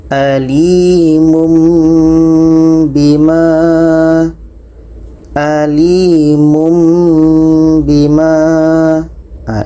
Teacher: Bunyi tanwin ini kita ubah kepada mim. Kita baca alimum bima, alimum bima. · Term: iqlab